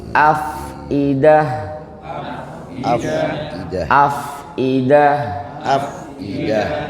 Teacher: Terus huruf fa sukun dialirkan nafasnya Bapak Ibu coba.